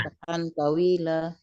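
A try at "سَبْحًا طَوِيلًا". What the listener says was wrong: Betul.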